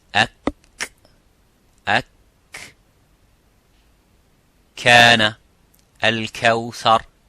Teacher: the kaf touches the roof of the mouth, a little bit touches the bone of the roof of the mouth